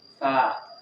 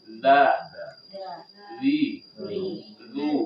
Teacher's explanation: Kita bedakan dengan t makhrajnya sama tapi kalau ta ada hembusan napas